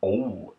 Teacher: with a native Maine accent, the O tends to go into a deep O, almost like a rock being dropped into a deep pool.